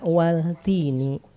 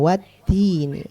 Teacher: si lam sukunnya ini enggak dibaca waltini. Jadi langsung wattini. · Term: alif lam syamsiyah